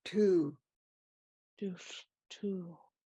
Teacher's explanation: Make sure you remember there's a W there at the end of the word. So you need, in order to sound right, you need to purse your lips at the very end.